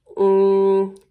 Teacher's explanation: it's that N sound, but it's in the back of our throat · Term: NG sound